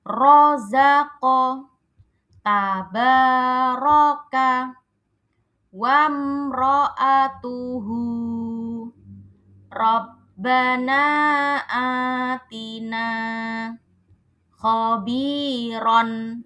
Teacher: Yang pertama itu kalau huruf r-nya berharakat fathah atau fathahtain maka r-nya itu sifatnya tebal. rozaqo tabaroka wamroatuhu rabbana atina khobiron ini ya semua huruf rnya ini harakatnya fathah dan ada satu yang fathah tanwin maka huruf rnya harus dibaca tebal ro kedengaran jelas ro ya dibaca tebal.